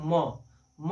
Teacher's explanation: म कहिएगा ना तो थोड़ा नाक पर उसका जोड़ आएगा